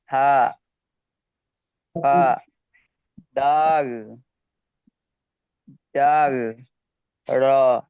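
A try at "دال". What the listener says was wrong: দাল আর জালটা আরেকটু টান হবে।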